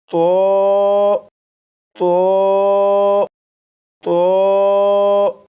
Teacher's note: زبان کی نوک اوپر سامنے کے دو دانتوں کی جڑ سے لگا کر پڑھے گا۔ نمبر دو، آواز کو موٹا کر کے پڑھے گا، جیسے تو تو 4 مرتبہ پڑھے گا۔